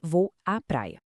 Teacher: o fenômeno da crase, que é a fusão de dois as